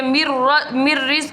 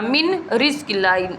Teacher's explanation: حروف یرملون میں را اور لام میں غنہ نہیں کیا جاتا ۔ نون ساکن کے بعد را ہے، یہاں پہ ادغام ہوگا، · من رزق اللہ، یہ نہیں پڑھنا، مر پڑھنا ہے، اس لیے یہاں پہ نون ساکن ختم ہو جائے گا، را کے ساتھ سیدھا جا کر یہ میم ملے گا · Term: بغیر غنہ